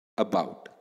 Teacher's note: So in other words the second syllable is pronounced louder than the first syllable